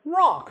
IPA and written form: ɹɑk (rock)